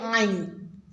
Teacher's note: आइन का मखरज वस्त हलक से अदा करें